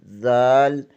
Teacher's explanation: زبان کی نوک ثنائے علیہ کے سرے سے لگے تو زال ادا ہوتا ہے